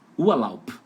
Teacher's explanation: Lau. Só que o final, a letra B, tá com som de P